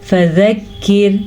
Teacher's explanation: یہ باریک کاف ہے، اس کو ہمیشہ باریک پڑھا جاتا ہے فذکر، اور اس کے ساتھ را بھی باریک پڑھی جائے گی کیونکہ را ساکن ہے، اور را ساکن سے پہلے زیر ہے تو یہ را باریک پڑھی جائے گی۔